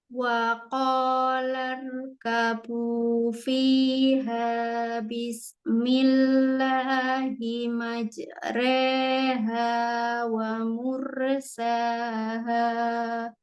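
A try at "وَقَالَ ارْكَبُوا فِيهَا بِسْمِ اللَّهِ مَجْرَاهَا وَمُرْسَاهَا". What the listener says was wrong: Ini kan jimnya memang ada qalqalah, tapi jangan putus suaranya. Jadi Bismillahimajreha. Majreha sambung sama re-nya. Majre, oke, jangan putus.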